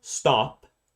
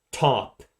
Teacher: So stop is not aspirated, but top is aspirated.